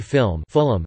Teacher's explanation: Due to Gaelic influence, an epenthetic schwa is sometimes inserted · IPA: [ˈfɪləm]